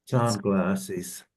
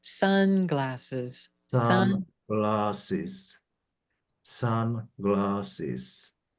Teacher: Sunglasses, like coming down a little bit with the voice